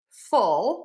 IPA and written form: fʊl (FULL)